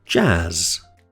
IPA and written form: dʒæz (jazz)